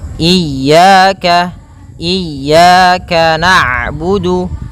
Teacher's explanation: Ketika huruf ain berharakat sukun, ain itu punya sifat namanya bainiyah, yaitu bacaan di antara syiddah dan rokhawah